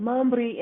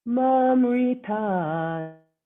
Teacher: there's no rolling of R